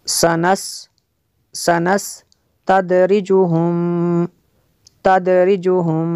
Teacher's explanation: میم ساکن کے بعد دوسری میم ہے تو یہاں پہ ادغام شفوی ہوگا.